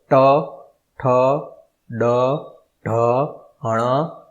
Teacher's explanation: દાંતની થોડોક પાછળનો ભાગ અડશે અને જીભનો ઉપયોગ થાય છે.